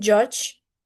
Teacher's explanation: the voiced affricate begins as d and ends in j, as in judge.